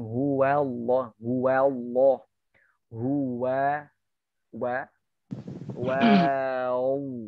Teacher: Wawunya terbawa huruf Allah tebal. Wanya itu sebenarnya tipis.